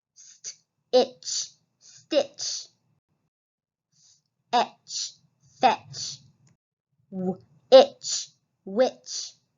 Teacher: We don't hear the T at all. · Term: ch sound